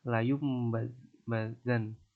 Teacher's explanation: Contohnya yaitu layum bazan. Nah, di situ kan nun matinya hilang diganti mim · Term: iklab